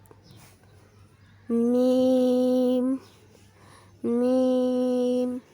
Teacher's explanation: دونوں ہونٹوں کے خشکی سے میم ادا ہوتا ہے